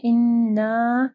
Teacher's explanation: إنا نون مشدد ہے، ٹھیک ہے، یہاں پہ غنہ ہوگا اور الف مدہ کو پڑھنا ہے. إنا پھر مد ہے، اس کے بعد حمزہ ہے، 4 سے 5 حرکات کے برابر اس کو لمبا کرنا ہے